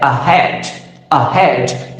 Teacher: in these two syllables one syllable is stress which is head and another is not stress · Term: stressed syllable